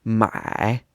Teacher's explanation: my means to buy it's in the third tone